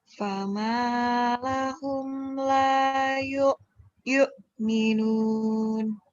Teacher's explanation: Yuk-nya kayak neken. Ada hamzah mati. Yuk, makan Yuk.